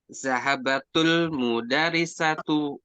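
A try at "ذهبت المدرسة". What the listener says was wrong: Berharokat kasroh ta ta'nisnya. Kasroh. Kan zahabat ini kan sudah berubah menjadi ta, berarti dia diakhiri dengan ta. taknya berarti berharokat kasroh ketika diwasal.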